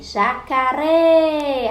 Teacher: O outro exemplo, jacaré. Então, a última sílaba, a sílaba mais forte foi o ré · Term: oxítona